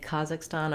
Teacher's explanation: So we have ours, when we say Kazakhstan, our k is at the velar place, tongue lifting against the roof of the mouth. Theirs is going to be more in the throat, Kazakhstan.